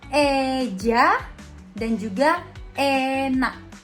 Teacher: Selanjutnya itu ada vokal e. E madia atas depan dengan kondisi bibir semi tertutup